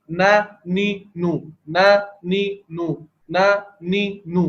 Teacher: نون میں زبان کی نوک کہاں لگ رہی ہے؟ اوپر مسوڑوں پر، ثنایا اولیاء کے مسوڑوں پر لگ رہی ہے